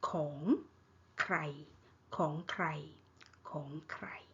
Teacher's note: ของใครของ rising tone ใคร mid tone ของใคร okay, ของใคร means whose.